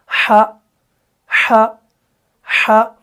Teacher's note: یہ پھسلتا نہیں ہے کیونکہ حلق سے ادا ہونے والا حرف ہے